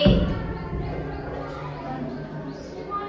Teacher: कंठ और तालु का स्पर्श होता है